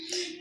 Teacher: Va, upper teeth touches lower teeth, upper teeth touches lower lip. This is called va, v.